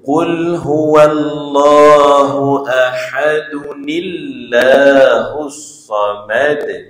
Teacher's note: Maka kena ada lantunan ahad. Tapi kalau dia sambung dia tak ada jadi hukum qalqalah